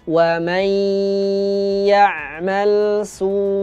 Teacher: Sinnya dibaca 5 harakat karena mat wajib mutasil